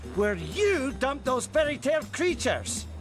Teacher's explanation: we can't hear that T sound at the end of dumped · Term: connected speech